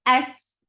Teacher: It is light and it will get rakhawa. Rakhawa is a flow of sound. So the sound of sin shouldn't stop until next letter is coming up.